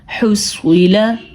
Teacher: سواد کو ہم نے پر پڑھا ہے کیونکہ سواد حروف مستعلیہ میں سے ہے